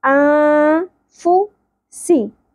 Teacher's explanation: ہم اخفاء معاون کریں گے نون ساکن کی اواز کو چھپا لیں گے ان فو سی زیادہ نہیں کھینچیں گے ان دونوں جگہوں پر